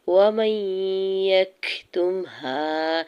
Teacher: میم کے زبر کو یا مشدد کے ساتھ ملاتے ہوئے ادغام مع غنہ کا رول اپلائی ہو رہا ہے